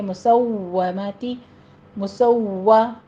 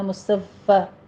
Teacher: واو کے اوپر آپ ہونٹ گول کیجئے، تشدید ہے، سختی کرنی ہے، لیکن اس کو فا نہیں بنانا، مصفہ ایسے نہیں کرنا۔